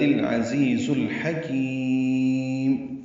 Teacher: میم ساکن پہ اظہار ہے، اس سے اظہار شفوی کہتے ہیں، ہونٹ بند ہو جائیں گے، آواز روک دیں گے